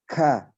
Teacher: Kaf terutama itu aslinya sidah, keras. Tetapi dia punya sifat hamas, keluar udara. Sifat hamasnya ini melekat dalam bacaan berharokat fathah, dhammah maupun kasroh ataupun sukun.